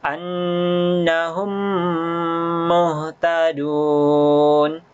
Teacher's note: dileburkan masuk ke huruf mim yang kedua dan didengungkan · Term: idgham syafawi